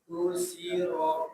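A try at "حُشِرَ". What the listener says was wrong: nah, sin lebih banyak. Hushi. Nah, pakai sin ya. Yang ada tiga itu. Hushiro.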